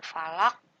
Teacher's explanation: Oke, di akhir ayat falaq. Nah, ini huruf qafnya harus dipantulkan walaupun berharokat kasroh, cuma harus disukunkan, dimatikan. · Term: qalqalah kubro